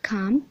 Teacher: the vocal folds are held together so the sound is voiced and the passive articulator is the upper lip